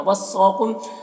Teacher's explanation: सौद को पुर पढ़ेंगे, हुरूफ़ मुस्तअलिया में से